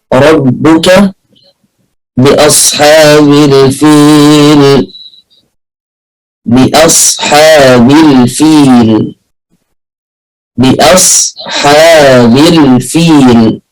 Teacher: الراء مفخمة وبقية الحروف مرققة